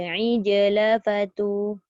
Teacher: Dia tak boleh angin. Jim ada qalqalah je.